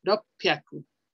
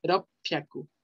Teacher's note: esta pequeña tsu hace que la siguiente consonante se pronuncie doble. Por eso es ropyaku.